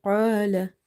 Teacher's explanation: Qaf is heavy. Alif is madda as well as it's heavy because of heavy letter is coming before it.